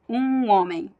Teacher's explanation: In Brazil, the word it's one single sound. There is no M or N. It's a nasal U. So you bring all your air passes through your nose and mouth.